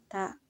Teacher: menyentuh ujung lidah dengan gusi-gusi gigi seri bagian atas dan terdengar ada nafas yang mengalir atau hams